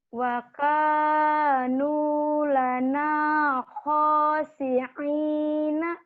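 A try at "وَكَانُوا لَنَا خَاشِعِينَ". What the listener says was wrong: wa kanu lana khashi'ina. Kalau latih kho sama shinnya belum keluar tuh. Khashi'ina.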